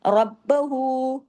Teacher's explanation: जैसी बा पे आएंगे जुबान को नीचे लाइए, रा को हैवी कीजिए